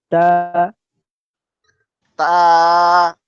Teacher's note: জিব্বার আগা সামনে করে দুই দাঁতে গোড়ার সাথে লাগাইয়া মাখরাজ দেবে।